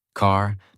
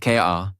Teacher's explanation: In American English, the R sound is strong and clear. It is not silent. It is not weak. It is fully pronounced. Your tongue moves slightly back. · In American accent you clearly hear the R. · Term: American R sound